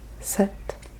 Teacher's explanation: Kind of almost pretend that the P is not there. Like you're saying set that on the table.